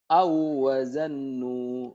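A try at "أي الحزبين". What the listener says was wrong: Bukan. Jangan awazannu. Gak ada tasdid. Yang tasdidnya di wawunya doang.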